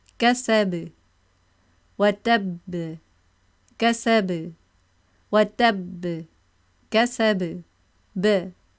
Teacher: Mushaddad letter and letter without shadda are articulated the same. No difference in strength of qalqalah.